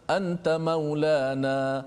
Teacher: dia meninggalkan dengung pada kalimah nun yang mati bertemu dengan ta